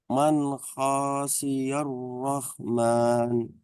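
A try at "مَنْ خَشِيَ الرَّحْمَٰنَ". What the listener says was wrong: Haknya pendek. Man khosyir rahman. Man khosyir rahman. Roknya sempurnakan di tasdid ya.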